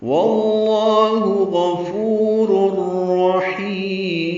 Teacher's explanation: واللہ غفور رحیم، واو کی زبر کی وجہ سے لام اس میں جلالہ پر ہے اور 2 حرکات لمبا ہے. غفور میں غین پر ہے، فو واو مدہ ہے، 2 حرکات لمبا ہے